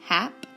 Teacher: So you could split the word down and you can see you have 2 syllables. Here's a short A. It says ah because it's closed in.